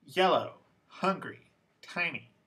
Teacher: these words all have two syllables and the stress is on the first syllable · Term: word stress